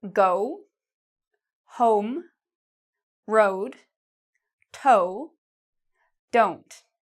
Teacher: It's not spread, it's actually very small. Your mouth actually almost looks like an O shaped. Okay, so it looks more like this.